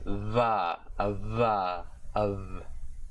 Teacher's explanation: The voiced bilabial fricative consonant, or the beta letter